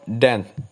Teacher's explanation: Alternatively, try isolating the consonant sound in the word dent. And you should feel that the tongue tip is making contact with the alveolar ridge.